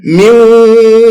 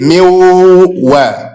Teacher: Only wa, but with gunna